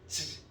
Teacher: 즈를 내기 전에 약간 막았다가 윽 하고 막았다가 즈 하고 되거든요. 스하고 달라요. · 입천장과 혀 사이의 좁은 틈을 빠져나가요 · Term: 센입천장 소리